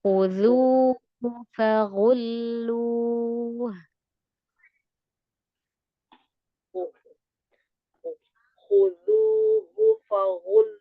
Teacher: Dan forward itu tebal semua. Ya, kho-nya tebal. Zal-nya tipis. Ha-nya tipis. Kemudian, fa tipis. Ghain tebal. Lam tipis. Ha tipis.